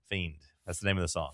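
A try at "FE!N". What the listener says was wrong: F-E-I-N. There's no D.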